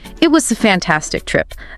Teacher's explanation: that rise on fantastic then the fall it really highlights how good the trip was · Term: Rising falling, rising falling